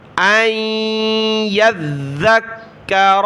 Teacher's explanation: ज़ाल पर ज़बान निकालेंगे, सख्त भी करना है इसको और काफ को भी सख्त करना है